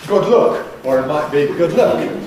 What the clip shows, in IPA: ˈgʊd ˈlʊk